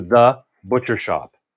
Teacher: so the emphasis here is on the shop